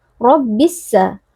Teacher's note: ro merupakan huruf tafkhim yaitu Huruf tebal jadi di sini kita harus angkat pangkal lidahnya